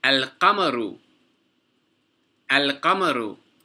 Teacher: The qaf is a moon letter. Therefore, we pronounce the lam. So there's a sukoon on the lam and we pronounce it al-qamaru.